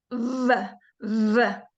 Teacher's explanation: So, and then if the V, we bring our front teeth down over our lip and we make a buzzing sound